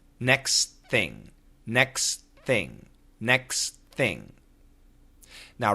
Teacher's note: first thing that happens is when we say next thing fast the T and the th combine they link and we only hear the th